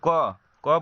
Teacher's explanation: क बोलेंगे तो आवाज कहाँ से निकल रहा है? कंठ को स्पर्श करते हुए निकल रहा है। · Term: कंठ व्यंजन